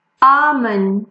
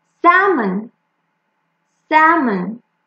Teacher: L is also not pronounced when it is in the middle of A and M